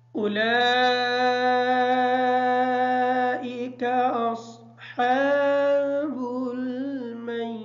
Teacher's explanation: اولئک کی جو لام ہے اس لام کی مد کو مکمل کریں گے